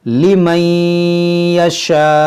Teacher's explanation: यहाँ पर देखेंगे अलिफ मद्दा के बाद हमज़ा है, तो यहाँ पर मद्दे मुत्तसिल करेंगे हम, और रुकेंगे तो इस हमज़ा को साकिना करेंगे, और जब हमज़ा साकिना होगा तो झटका करेंगे।